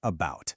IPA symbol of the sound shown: ə